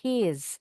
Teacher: Kalau disambung he is s-nya bunyinya jadi seperti Z.